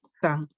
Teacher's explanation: en santo perdemos toda la última sílaba y decimos san, ¿cierto? Santo, san. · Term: apócope